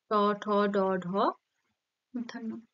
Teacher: ট ঠ উচ্চারণ করার সময় জীভের অগ্রভাগ কোন স্থানে স্পর্শ করছে মূর্ধাতে তাই এটা কোন ধ্বনি হবে মূর্ধন্য ধ্বনি হুম তারপর চারের দাগে